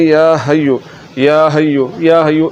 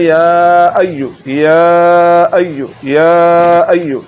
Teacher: یہاں پر ہا نہیں پڑھنا، بلکہ آپ نے حمزہ کی آواز نکالنی اور پڑھنا ہے